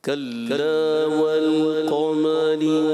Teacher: کلا ایسے موٹا نہ ہو، کاف بھی باریک لام بھی باریک